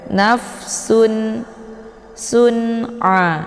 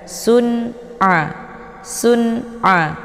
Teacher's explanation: Tidak perlu dibaca dengung ataupun ditahan bacaannya. Langsung saja ditekan, langsung masuk ke huruf ain. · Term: idhar halqi